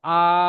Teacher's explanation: যেমন হামজা আলিফ জবর আ এই যে আ শব্দটা টান দিলেন তখন এখানে মাদ্দা হয়ে যাচ্ছে